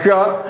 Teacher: मूर्धन्य मूर्धा से उच्चारण करेंगे